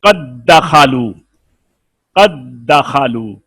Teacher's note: दाल का दाल में इदगाम हुआ है